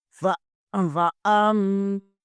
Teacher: یہاں پر میم مشدد ہے، یہاں پر غنہ لازمی ہوگا